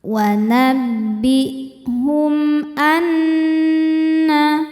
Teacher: Wa nabbihum anna, nun tasydidnya dihukumi gunnah musyaddadah karena nun bertasydid. Cara bacanya berdengung, tahan dengungannya kurang lebih 2 harokat.